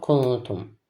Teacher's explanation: Sonra isə t hərfini deyirik. Nun ix edəndə səsin yarısı ağızdan, yarısı isə burundan çıxır. Yəni ixədə nun hərfiə nə izhardakı kimi açıq-aşkar oxunmur, nə də idamdakı kimi tam itmir.